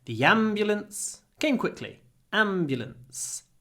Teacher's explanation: because the am is stressed we get a long M